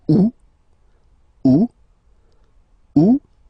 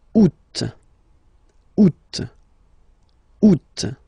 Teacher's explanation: you don't pronounce the final T the U. Second one you pronounce it oot.